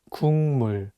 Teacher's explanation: The consonant 기역 is for G sound in English, so you can read it as 국. But it's paired with the nasal sound 미음, so it changes the pronunciation from a G sound to an NG sound